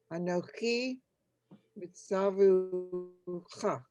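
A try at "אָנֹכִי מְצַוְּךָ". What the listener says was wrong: We don't say the oo. It's just really being more of a vav than a vowel. So it's misavcha. I know that's very confusing. Why would you put the dot in there that says oo, but not give it the sound?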